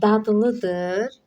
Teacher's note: Bu sondakı r tələffüz olunmayacaq. Dad dıd şəklində tələff olunacaq.